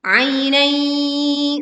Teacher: kita baca lin ya sukun dengan suara yang lembut